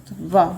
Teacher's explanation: व का उच्चारण स्थान क्या है? दंत ओष्ठ है। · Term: दंतोष्ठ